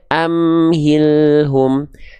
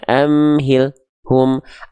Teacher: antara AL dengan hu tidak boleh ada jeda suaranya enggak boleh mati suaranya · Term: lam sukun